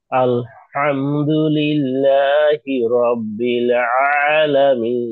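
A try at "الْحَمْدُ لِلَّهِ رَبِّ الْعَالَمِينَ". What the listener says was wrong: মাশাআল্লাহ।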